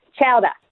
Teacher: people in the Boston area don't have their R's